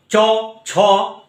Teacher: দেখো চ ছ যখন আমরা বলছি তখন এইটা আমাদের কি হচ্ছে, কোনটা জিভটা ওপরের শক্ত তালুকে স্পর্শ করে যখন উচ্চারিত হচ্ছে তাকেই তালব্য ধ্বনি বা জিহ্বামূলীয় বলা হচ্ছে। অর্থাৎ জিহ্বার মূল যে অংশটা, অর্থাৎ মাঝের যে অংশটা, সেইটা আমরা টাচ করছি শক্ত তালুটাতে, তার জন্য সেটাকে তালব্য ধ্বনি বলছি।